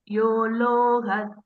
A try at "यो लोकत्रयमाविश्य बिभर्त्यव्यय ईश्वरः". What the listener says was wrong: Small correction. You pronounce it loga. It is loka. Yo lokatrayamavish loka. Loka is first ka. You are pronouncing third ka.